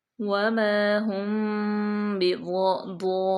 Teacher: میم ساکن کے بعد با آ گیا تو یہاں پہ اخفاء شفوی ہوگا